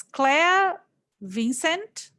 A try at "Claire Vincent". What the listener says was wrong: As a French, you would say Claire Vincent.